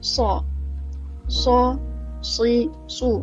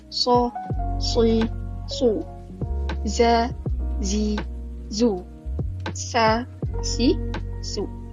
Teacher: yang bahagian hujung lidah ni dia antara gigi atas dengan gigi bawah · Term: huruf sin